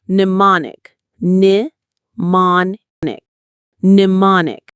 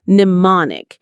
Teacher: It's a strange spelling with that silent M at the beginning. The stress is on mon.